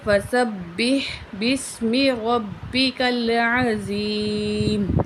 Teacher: تو وقف کی صورت میں یہاں پہ میم ساکن ہو جائے گا